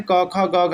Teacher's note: क वर्ग में क, ख, ग, घ इन सभी का उच्चारण कंठ से होगा